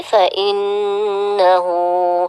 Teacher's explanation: nun tasdid dibaca dengan gunnah yang sempurna. Fa innahu dibaca sekitar 2 atau 3 harokat, namun disempurnakan lebih baik ya. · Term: gunnah musyaddadah